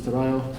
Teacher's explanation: Andalusians pronounce double L like a Y, and their Ds tend to be absorbed by adjacent vowels. Torado becomes Torayo, and so on and so forth, right?